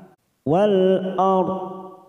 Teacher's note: hati-hati ada ro sukun kita baca tafkim karena sebelumnya fathah